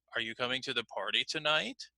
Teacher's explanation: yes-or-no questions have what we call rising intonation so my voice was going up